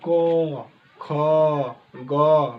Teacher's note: जैसे क वर्ग को उच्चारण करेंगे तो इनकी उच्चारण कंठ से होता है। बोलिए क, ख, ग, बिना कंठ के इनके उच्चारण करने में असंभव महसूस होगा।